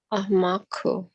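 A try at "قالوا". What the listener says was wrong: Amaru. Amaru. That's an R sound. Amaru. Amaru. Amaru. Amaru. So that's how you say they is Amaru. You put the U on the end.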